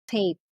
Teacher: the word tape so it's a combination of the vowel e and i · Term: diphthong